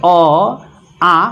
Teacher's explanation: अ और आ का उच्चारण स्थान कंठ है। जैसे कंठ, अ, आ, न इसमें होस्ट की प्रयोग हो रही है, न तालु का, न जीभ का, सिर्फ कंठ से उत्पन्न हो रही है।